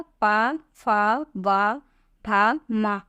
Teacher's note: पा, फा, वा, भा, मा का उच्चारण स्थान ओंठ होता है